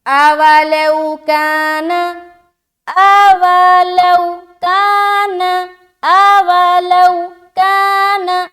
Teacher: اولو کہیں بھی نہیں کھینچنا، لو میں واولین ہو رہا، یہاں بھی نہیں کھینچ رہے